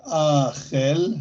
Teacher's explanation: هذه الكاف ملينة ومرققة فتلفظ خي.